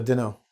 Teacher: Don't know becomes Dunno. t is dropped.